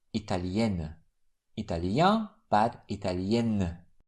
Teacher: Italien. But in the feminine form, the double N doesn't make the vowel nasalized anymore.